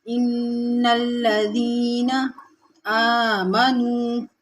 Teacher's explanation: آ کو کھینچیں گے کیونکہ اس کے اوپر کھڑا زبر ہے، اور واو ساکن اس سے پہلے پیش واو مدہ ہے، اس کو بھی کھینچیں گے۔